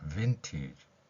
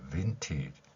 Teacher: 윗니로 아랫입술 물고 목젖이 울리는 윗소리 연결시키는 것입니다.